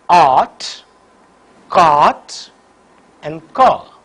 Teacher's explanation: During the articulation of this vowel, the back of the tongue is in fully open position. So, the lips are unrounded.